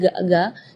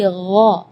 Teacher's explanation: Jadi kalau ga itu dia makhrajnya dari lidah. Ya, tapi kalau huruf ghain itu dari bagian tenggorokan ya. Jadi gha.